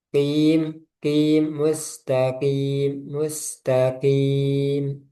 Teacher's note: Nah, qof-nya juga jangan ada udara ya.